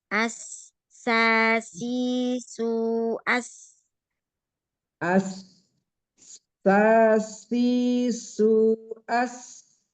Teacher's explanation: ujung lidahnya hampir menyentuh gigi seri ya dinding gigi seri bawah yang suaranya mengalir di antara gigi seri bawah dan atas ya. Jadi tipis dia. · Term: sin